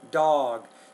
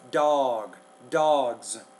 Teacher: maybe you're not making the vowel long enough